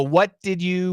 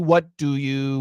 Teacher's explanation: The first one is going to usually have a J pronunciation and the second one will not.